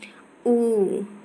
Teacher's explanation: औष्ठ्य दीर्घ पश्च संवृत वृत्तमुखी